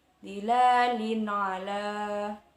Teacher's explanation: Kemudian dilalin ala, di sana ada kasroh tain atau kasroh yang tanwin bertemu dengan huruf ain, disebut idhar kholqi, dibaca terang dan jelas, tidak ada dengung atau samar sedikit pun.